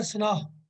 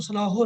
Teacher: ਇੱਕ ਤੇ ਜਿਹੜਾ ਲਫ਼ਜ਼ ਹੈ ਸਨਾਹ ਇਹਦੇ ਹਾਹੇ ਨੂੰ ਜਿਹੜੀ ਔਂਕੜ ਹੈ ਇਹ ਸਾਇਲੈਂਟ ਰਹੇਗੀ ਇਹਨੂੰ ਸਨਾਹੋ ਨਹੀਂ ਪੜਨਾ